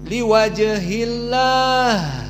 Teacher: ha sakinah di sini harus hams. Jangan ha-nya ditelan tapi dikeluarkan.